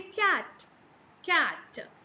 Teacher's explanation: when you are trying to pronounce cat, the k sound does not vibrate.